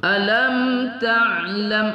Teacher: mim sukun bertemu ta tidak kita dengungkan pada izhar syafawi